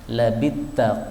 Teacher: fa-nya hilang masuk pada ta, namanya idgham